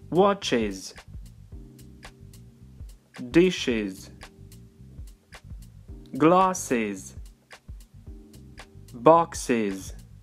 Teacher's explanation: Это окончание читается как IS.